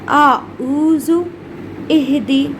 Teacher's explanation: جیسا کہ آپ کو میں نے قاعدہ نمبر 1 میں ہی بتا دیا تھا کہ پہلا مخرج حمزہ اور ہا کا ہے. حمزہ ہا جو کہ شروع حلق یعنی سینے کے پاس سے نکلتے ہیں اور اس کے ساتھ ان کے اندر سے ہوا نکلتی ہے